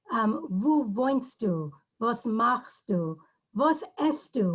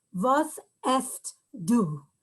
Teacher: we elide the two sounds to make the ending stu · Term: a contraction